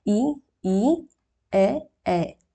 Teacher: अग्रभाग का जीभ के आगे वाले पार्ट का यूज कर रहे होते हैं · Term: अग्र स्वर